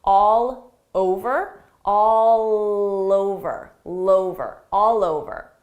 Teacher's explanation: I can link those sounds together by extending that L sound to the next word because it's a vowel